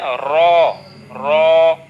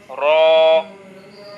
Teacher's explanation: 10 number মাখরাজে এই যে জিহ্বার আগা আমরা দেখতে পাচ্ছি, হ্যাঁ, এই জিহ্বার আগাটাকে সামান্য একটু উল্টা করতে হবে, মানে এই পিঠটা জিহ্বার আগার সামান্য একটু উল্টা পিঠ তার বরাবর উপরে তালুর সাথে লাগবে